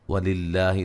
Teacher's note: وہ مدہ ہے، وَلِلَّهِ لفظ اللہ کو باریک پڑھیں گے، اس سے پہلے زیر ہے